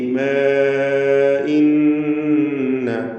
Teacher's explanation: 4 or 5 ഹറക്കത്തിൻ്റെ അളവിൽ അലിഫിനെ ദീർഘിപ്പിക്കൽ അനുവദനീയമാണ്. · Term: മദ് മുൻഫസിൽ ജായിസ്